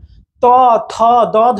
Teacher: জিহ্বা জিহ্বার এই যে একবারে অ্যাপেক্স জিহ্বার একবারে শীর্ষ শীর্ষবিন্দুটা যেখানে আপনার জিহ্বার শীর্ষবিন্দুটা দাঁতের গোড়ায় স্পর্শ করছে দেখেন তাই এগুলোকে বলে দন্তমূলীয়